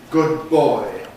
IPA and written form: ˌgʊd̚ ˈbɔɪ (good boy)